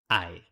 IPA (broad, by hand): ae